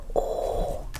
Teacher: My mouth is very very closed. Very closed. Ooh sound. Try to say O but with closed lips, closed mouth. Create a very small circle with your mouth.